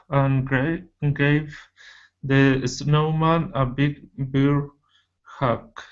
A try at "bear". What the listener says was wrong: The word is bear instead of beer. Okay, beer is with the 2 E's. That's beer. This is a year, bear, a big bear hug. That one right there, that is E, beer.